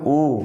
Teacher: जब हम बोलते हैं इन स्वरों को तो बोलते समय हमारा ओठ गोल हो जाता है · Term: वृत्त मुखी स्वर